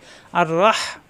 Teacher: আর এখানে জবর ধরে আর রহ, এখানে হা কণ্ঠনালীতে চাপ দিয়ে